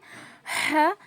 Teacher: हलक के बीच के हिस्से से हा अदा होगा और मुंह का जो हवा है ना वो बाहर की तरफ आएगा।